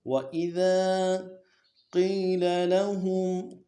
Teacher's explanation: قِيلَ اس کو بھی کھینچنا ہے، یہی مدہ ہے، قاف موٹا کرنا ہے